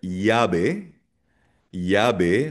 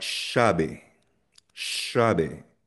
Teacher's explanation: sa Latin America, like sa Mexico, Colombia, Peru, ang double L binibigkas niya na parang Y